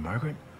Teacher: in this case the accent is in the first syllable corresponding to Mar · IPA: ˈmɑr gə rɪt